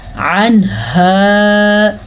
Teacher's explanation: ہا کے مخرج کا بھی دھیان دینا ہے. حلق کے آخری حصے سے یہ والا ہا نکلتا ہے. حلق کا وہ حصہ سینے کے سٹارٹ میں ہوتا ہے اور اس کی آواز بڑی گہری اندر سے آتی ہے.